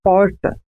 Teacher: Nesse caso, há um movimento de retroflexão da língua em direção ao fundo da boca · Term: R retroflexo